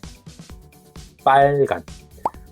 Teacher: like making a powerful P sound, but silently, okay? No voice, no air, just force.